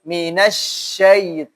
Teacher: apalagi huruf shin ini termasuk dari huruf yang hamas